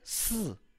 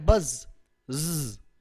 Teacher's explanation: Voiceless किस्म की sound स, और ये क्या है? बज, ज, ये वॉइस्ड है, वाइब्रेशन कॉज हो रही है इससे